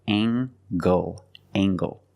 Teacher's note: Use the nasal plus the hard g.